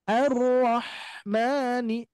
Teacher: huruf ha ya di sini tenggorokan bagian tengah